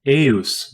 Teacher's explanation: it represents a long unrounded mid-front vowel kind of like the a in day